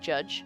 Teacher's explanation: that's the exact same as ch, except that they're voiced. Instead of being two voiceless sounds, it's two voiced sounds. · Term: affricates